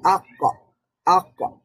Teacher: আওয়াজটা থামার পাশাপাশি শ্বাসও বন্ধ হয়ে গেছে, বাতাসটাও বন্ধ হয়ে গেছে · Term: জিহার, কফ